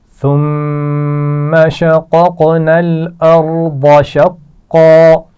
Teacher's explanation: شققنا پہلے قاف کو موٹا پڑا جائے گا زبر کے ساتھ · قلقلہ کیا جائے گا دوسرے قاف پر. ارض را کے مخرج کا خیال رکھتے ہوئے را کو پر پڑا جائے گا، اور اس کے بعد ضاد کو بھی موٹا پڑا جائے گا